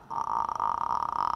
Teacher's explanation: This is very slow vibration of the vocal folds. It is so slow, we can count how many times that we hear a vibration in 1 second. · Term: creaky voice